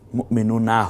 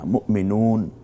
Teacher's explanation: যেমন মুমিনুন, মুমিনুনা হবে না, মুমিনুন, এখানে শুধু নটা উচ্চারিত হয়